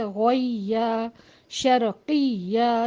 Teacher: نہیں کرنا، تو اس کو ہم جلدی ملائیں گے، غویہ شرقیہ، یا پہ تھوڑا سا زور دے کے اس کو اپنی آواز کو بلند کر کے نبر کرنا ہے تاکہ حرف مشدد کا بھی پتہ چلے اور اس کو حرف